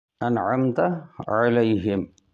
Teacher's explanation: انعمت علیہم، علی میں جو یا ہے وہ یائلین ہے، ہم کی میم پر قلقلہ نہ ہو